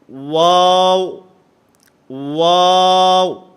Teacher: واو جو ہے یہ دونوں ہونٹوں کے گول ہونے سے ادا ہوتا ہے. نہ تمام گول کرنے ہیں، آپس کے اندر ہونٹوں کو ملنا نہیں چاہیے.